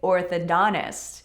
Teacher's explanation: Remember how those T's can disappear after N's.